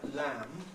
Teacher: the L and the M are fully voiced